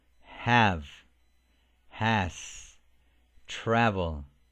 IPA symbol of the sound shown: æ